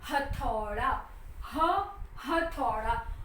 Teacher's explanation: ह जब बोलते हैं तब हवा को हम थोड़ी देर अंदर रोकते हैं और रोकने के बाद हम पूरे फोर्स के साथ हम बाहर, हवा की गर्मी को हम बाहर थ्रो करते हैं, तब ह की साउंड आती है। ह जब हम बोलते हैं तब गले के अंदर से तालुओं को छूते हुए हवा को बाहर फेंकते हैं, तब ह की साउंड आती है।